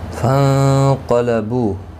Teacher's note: نون ساکن کے بعد حروف اخفا کا قاف اخفا حقیقی ہوگا. قاف حروف مستعلیہ میں سے ہے، پر پڑھا جائے گا.